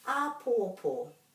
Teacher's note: all these three syllables have to be pronounced just as given as much emphasis as each other